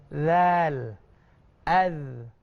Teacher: Huruf zal tadi kita punya lidah tu keluar sikit dekat ujung gigi kita